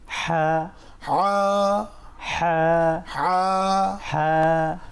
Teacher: হা এটি একটি অক্ষর এবং এই হা কণ্ঠনালীর মাঝখানে চেপে চেপে উচ্চারিত হয়